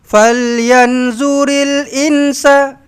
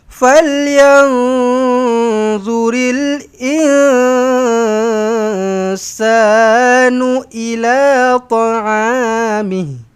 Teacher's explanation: Ada dua kali ikhfa hakiki. Nun kosong bertemu d, nun kosong bertemu sin. Ha dua-dua kena dengungkanlah. Jangan falyanzuril insa.